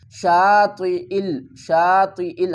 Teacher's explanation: ہم نے عین نہیں پڑھنا بلکہ حمزہ پڑھنا